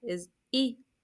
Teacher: remember it's a short vowel so you can't say be that would be too long